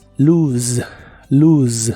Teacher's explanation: la letra o de esta palabra se pronuncia como una u larga o doble y la s suena ligeramente vibrante como si fuera la z inglesa la e del final es muda como de costumbre en inglés